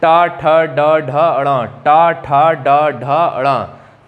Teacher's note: जब टा वर्ग के सभी वर्णों को बोलेंगे टा, ठ, ड, ढ, अणा, टा, ठा, ड, ढ, अणा, तो देखिए ये जीभ जो है हमारे ऊपरी छत को स्पर्श कर रही है और ऊपरी छत में भी अगले वाले हिस्से को स्पर्श कर रही है। ट, ठ, ड, ढ, अणा, एकदम ऊपर ऊपरी छत का अगला वाला हिस्सा वो हमारा कहलाता है मूर्धन्य।